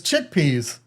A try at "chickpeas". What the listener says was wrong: I feel like you put a space between chick and peas.